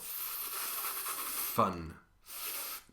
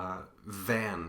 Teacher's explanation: you stay on the V your hand should feel you're buzzing in your throat · F and V are a pair of consonants that are identical except for that buzzing in your vocal cords.